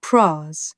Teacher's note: price sounding almost like pra with a flatter, more central vowel